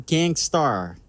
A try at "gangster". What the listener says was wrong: Oh, stop pronouncing It bothers me that you're pronouncing the R.